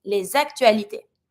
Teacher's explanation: I'm pronouncing my S from les and I'm linking it with my A. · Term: link it